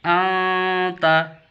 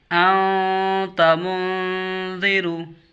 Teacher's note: زبان کے نوک کو تالو سے نہیں لگانا اور نون کی آواز کو چھپا کر پڑھنے کو اخفا کہتے ہیں